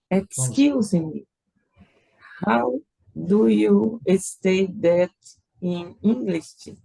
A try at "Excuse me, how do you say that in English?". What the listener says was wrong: Você falou stay.